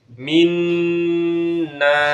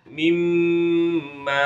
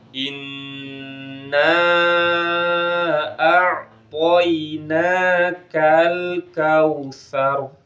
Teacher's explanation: Halaman 9 ini terkait dengan nun atau mim yang bertasydid. Nun dan mim yang bertasydid dibaca dengungnya lama ditahan.